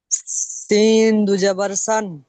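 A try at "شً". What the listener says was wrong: সিন নয়, শিন। শিন দু জবর শান।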